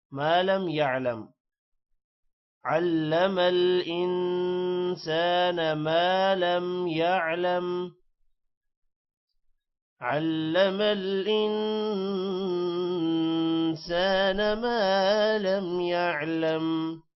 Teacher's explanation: سان الف حروف مدہ ہے جس کی وجہ سے تھوڑا سا لمبا کیا جائے گا